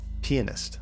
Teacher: pianist is pronounced with an emphasis on the first syllable